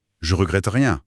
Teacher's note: la première partie de la négation, le fameux « ne », il disparaît purement et simplement, à l'oral.